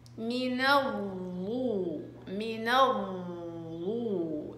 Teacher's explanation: من الضو من الضو، اسحب الصوت الى الداخل، اطبقيه بالضغط بيصير عندك ضا مطبقة